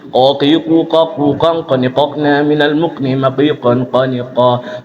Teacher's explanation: Kalau qaf itu tengah tenggorokan, kayak seperti nelen nasi. Nelen, dia nggak berbunyi.